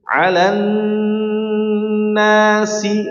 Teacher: huruf sa dihamaskan dengan sempurna. Nah, dihamas dan rohawa juga, mengalir nafas kemudian mengalir suaranya.